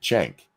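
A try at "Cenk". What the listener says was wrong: It's technically with a J, like the Turkish C in that context is a J.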